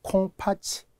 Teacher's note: 얘는 이모음이기 때문에 구개화가 되어서 치가 되죠